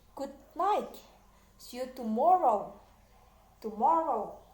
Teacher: Penekanan di suku kata kedua atau di tengah-tengah.